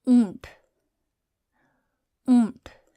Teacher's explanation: So notice it's the nasalized noon. So it's noon gunna.